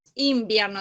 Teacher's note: porque nosotros decimos invierno de hecho parece que dijéramos una m